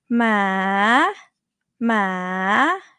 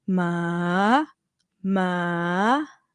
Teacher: rising actually goes up pretty high from 1.5 to four